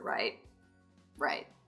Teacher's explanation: that sort of crackly quality that creeps into the voice when we're tired or we're not supporting with enough air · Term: vocal fry